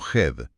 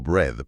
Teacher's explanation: es ese sonido intermedio y ambiguo que no es ni una E clara ni una A pura del español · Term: fonema vocálico EA